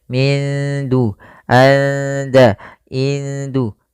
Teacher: di sini nunnya disamarkan ke DA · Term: Ikhfa